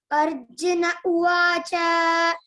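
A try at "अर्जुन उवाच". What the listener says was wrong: Cha, you should not make elongate. It's a short vowel.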